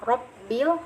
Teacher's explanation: ro di sini punya hukum bacaan tafkhim, tebal lagi, artinya tebal itu pangkal lidah bagian dalam harus sudah terangkat mengenai daging langit-langit ya.